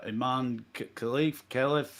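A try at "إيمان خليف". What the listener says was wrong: I think it's Halif, but yeah, I think K is silent.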